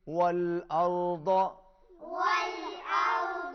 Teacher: واو پر ہونٹ گول ہوں گے